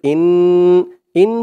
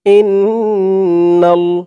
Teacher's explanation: ইন হামজা দিয়ে নুন ধরবে হামজা নুন জের ইন ইন বলে গুন্নাহ করতে হবে ওয়াজিব গুন্নাহ কারণ হরকতের পরে নুনের উপরে তাসদিদ আসছে